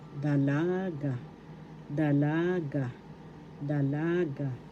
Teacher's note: First syllable da, second syllable la, third syllable ga. The accent is in the second syllable, dalaga, dalaga, dalaga.